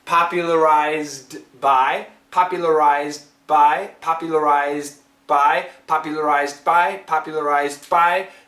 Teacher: Now, lots of people also miss the D, popularized by. Well, the Z sound in this case really is strong, and it's kind of canceling out that D.